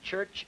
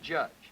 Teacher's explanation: Voiceless and voiced affricates, as in church and judge.